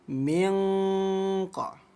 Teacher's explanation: Ikhfa itu artinya samar. Jadi bunyi nunnya harus disamarkan.